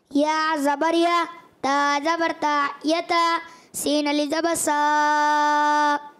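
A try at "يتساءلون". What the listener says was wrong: अभी आपने मद पहले से ही कर दी, सीन अलिफ ज़बर सा।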